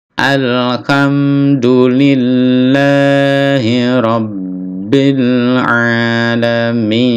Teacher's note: Rabbil ada penekanan lalu ditahan